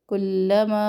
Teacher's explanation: لام تشدید تھوڑا سا ٹائم دینا ہے